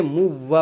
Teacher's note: اصل میں یہ منوا تھا، تو نون ساکین کی وجہ سے نون ساکین کے بعد حروف یرملون کا واو آ گیا، اس لیے اس نون کو حذف کر کے یعنی نہ پڑھ کر کے واو کو پڑھیں گے، کیونکہ منوا نہیں پڑھیں گے بلکہ موّا پڑھیں گے۔ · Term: ادغام